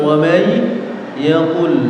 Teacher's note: Idgham bi gunnah di kalimat wa may yaqul. Nun sukun bertemu huruf ya.